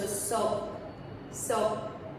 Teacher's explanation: Just stop it with a K in the back of your throat. Soak. And so I sometimes think of it as almost like, instead of letting it out, almost like swallowing it.